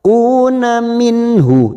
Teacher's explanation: Nun sukun bertemu ha idhar halki kita baca jelas tanpa mendengung. Nun sukun atau tanwin yang bertemu dengan 6 huruf ini, yaitu hamzah, ha, kha, ain, ghain dibaca jelas tanpa mendengung.